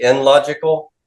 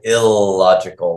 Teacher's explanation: the in assimilates to the L of logical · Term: assimilation